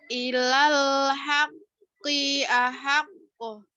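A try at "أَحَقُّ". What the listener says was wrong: Nah, ahaqqo. Mantulnya jangan ku atau ke. Atau ke. Mantulnya ahaqqo. Kembali ke ko ya.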